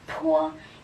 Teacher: And then the letter P, it's po. You can feel the air.